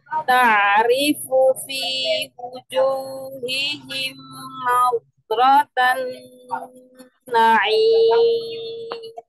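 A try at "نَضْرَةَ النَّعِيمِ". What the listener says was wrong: Masih ada huruf dad ya. Nadratan na'im. Tampakkan istitolahnya pada huruf dad. Nadratan na'im.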